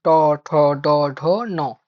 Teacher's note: এগুলো এরকমই, মূর্ধন্য ধ্বনিতে যে নটা থাকে সেই নটা উচ্চারণ করার সময় আমাকে জিহাটা উল্টো করে ট ঠ যেভাবে উচ্চারণ করছি সেভাবেই নটাকেও উচ্চারণ করতে হবে